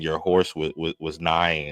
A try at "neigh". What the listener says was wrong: They neigh. They don't nigh. Horses neigh.